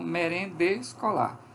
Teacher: cai a primeira vogal